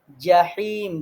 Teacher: জিম জিহ্বার মাঝখানে হা কণ্ঠনালীর মাঝখানে এরপরে ইয়া জিহ্বার মাঝখানে তারপরে মিম দুই ঠোঁটে